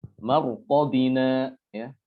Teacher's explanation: Ya, ro di sini sukun, ya kan? Huruf ro sukun, namun sebelum ro adalah huruf mim yang berharokat fathah sehingga dia dibaca tebal.